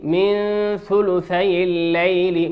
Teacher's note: نون ساكنة أتى بعدها حرف الثاء في كلمة ثلث والثاء من حروف الإخفاء